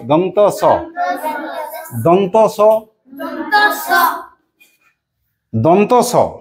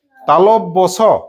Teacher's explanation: একটাতে দাঁত স্পর্শ করছে আর একটাতে তালু, সেই জন্য ওরা দু রকম। যখন দাঁত স্পর্শ করে তখন দন্ত স, তালব্য স।